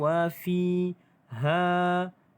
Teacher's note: di sini ada hukum mad asli huruf ya. 2 harakat panjang wa fiha. 2 harakat mad asli huruf alif.